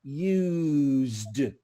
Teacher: this s is a soft consonant use like a bee buzzing in your mouth